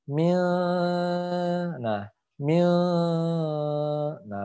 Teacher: nun sukun bertemu huruf Sin lagi jadi harus ditahan ya Mi nah Mi nah begitu Ya ditahan